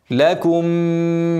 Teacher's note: ميم ساكنه بعدها ميم متحركه هنعمل ادغام مثلين صغير هنغني تين